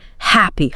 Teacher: Exaggerate it. Really push out a puff of air before the vowel. Think of it like a sigh.